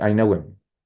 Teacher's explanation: in this case the H almost doesn't sound